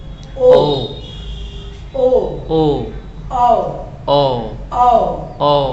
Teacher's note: पहले तो ओठ, ओठ आगे को निकलना, फिर उसके बाद ओ, कंठ में भी झंझनाहट हो रही है तो ओ का उच्चारण स्थान और यह भी जो है कंठोष्ठ से बोला जा रहा है।